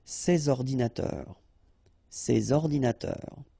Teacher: you should make the liaison between S and O